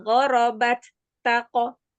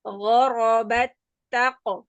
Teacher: Huruf ta yang pertama langsung masuk ke dalam huruf ta yang kedua. Tidak disukunkan lebih dahulu um.